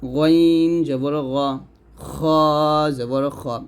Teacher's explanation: এই দুইটা আমরা গলার শেষ থেকে উচ্চারণ করব মোটা করে